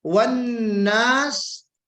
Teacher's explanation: یہاں پہ غنہ ہوگا، نون مشدد کا غنہ ہے، اس کو ہم غنہ واجبی کہتے ہیں، واجبی غنہ، یعنی نون مشدد اور میم مشدد جہاں آپ کو نظر آئے وہاں پہ غنہ کرنا آپ کو ضروری ہوگا، آگے کچھ بھی ہو پیچھے بھی کچھ ہو، کوئی اس سے فرق نہیں پڑتا.